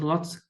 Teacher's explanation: Scottish English or Irish English concerns the positional allophones of the consonant L, syllable initial L, as in lots clear, for example, pronounced with the body of the tongue raised towards the hard palate, giving a front vowel resonance